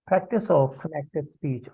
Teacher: पहले वर्ड का जो कॉन्सोनेंट है वो दूसरे वर्ड के वॉल से जुड़ जाता है, मिल जाता है. एड a new syllable is form, और एक नया सिलेबल बन जाता है.